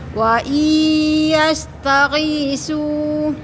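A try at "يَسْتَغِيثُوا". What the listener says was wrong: Lidahnya keluar. masih nyumbut ke dalam Ibu ya. Agak dikeluarin ya.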